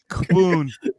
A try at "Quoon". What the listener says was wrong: You gotta pronounce the W. You gotta say the W. Quoon.